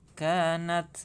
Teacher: natsa juga hamas ya. Kanat, ada udara yang keluar.